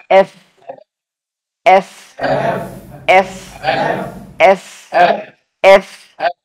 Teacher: এটা বলতে হয় উপরের দাঁত নিচের ঠোঁটে হালকা করে স্পর্শ করে